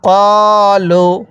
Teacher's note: কফের মধ্যে এক আলিফ টান দিব জবরের পরে খালি আলিফ থাকার কারণে